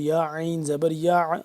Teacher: اب دیکھ لیں یہاں پہ ہم غنہ کریں گے پہلے، اور یا عین زبر یا، عین کو حلق کے درمیان والے حصے سے ذرا کھچاؤ پیدا کر کے سختی سے نکالیں گے